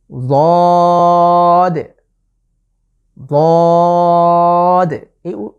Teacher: আমি জিভের যে গোড়ার কিনারা সেটাকে আমি মাড়ির দাঁতের সাথে লাগিয়ে উচ্চারণের চেষ্টা করছি। ضاد ضاد। এই লেটারটি উচ্চারণ একটু মোটা করে উচ্চারণের চেষ্টা করব ইনশাআল্লাহ।